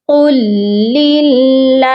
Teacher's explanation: اللہ کے لام سے پہلے جب زیر آتی ہے تو ہم اللہ کے لام کو باریک پڑھتے ہیں